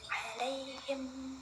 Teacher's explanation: Nah, selanjutnya jenis yang terakhir nih dari mim mati, yaitu idgham mutamatsilain atau idgham mimi adalah hukum bacaan ketika mim mati bertemu mim dengan membacanya ditasydidkan dan wajib dibaca dengung